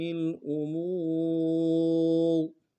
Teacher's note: را کے نیچے زیر ہے، لیکن وقت کی صورت میں را کو موٹا ادا کریں گے. را بھی وقت ساکن ہوگا تو را ساکن اس سے پہلے پیش، واو بھی ساکن ہے، واو سے پہلے پیش ہے، تو کیا کریں گے، موٹا کریں گے.